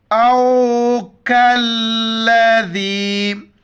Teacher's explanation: چھوٹی کاف ہے، باریک پڑھیں گے، کاف کو لام کے ساتھ ملائیں گے، بیچ میں الف کو نہیں پڑھیں گے، لام کے ساتھ ملائیں گے۔